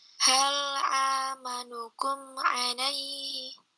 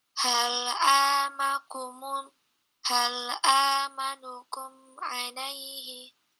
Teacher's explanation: huruf A jangan masuk ke hidung